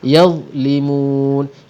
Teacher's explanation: Dha bukan huruf syiddah, jadi dia tak ada lantunan. Yadlimun, mun ialah mad arid li sukun, kita panjangkan 2 harakat ataupun 4 harakat ataupun 6 harakat ketika mewakafkan di situ.